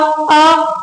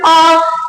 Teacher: अ जैसे मैं बोलू छोटा अ अ और फिर बोल आ तो इसकी आवाज कहां से निकल रही है कंठ में से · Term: छोटा अ और बड़ा अ